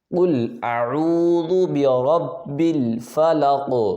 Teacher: قلقلہ کیا جائے گا اور آواز یعنی کہ ڈبل نکلے گی